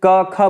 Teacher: जब आप क, ख बोलेंगे, ग बोलेंगे तो आपकी जीभ गले में ऊपर टच हो रही है, गले में अंदर, है ना, तो वो इसीलिए वो कंठ हो गया।